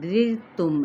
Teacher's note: اور یہ را ساکن ما قبل کسرہ ہے تو را باریک ادا ہوگا ، رِرْتُم رِر کر کے نہیں ادا کرنا، رِرْتُم میم پہ